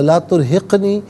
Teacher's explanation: قاف ساکن ہے لیکن حرف قلقلہ ہے تو آواز لوٹتی بھی محسوس ہونی چاہیے۔ لا ترہقنی غلط، لا ترہقنی قاف ساکن کو اس طرح پڑھیں گے کہ آواز لوٹتی بھی محسوس ہو۔